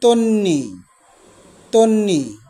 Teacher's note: তন্নি বফলার উচ্চারণ হবে না কিন্তু তার পূর্ববর্ণ দন্তন্য এটি দুইবার উচ্চারিত হবে